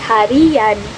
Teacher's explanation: akan muncul bunyi pelancar y apabila sebuah kata yang berakhiran dengan bunyi i diberi sufiks an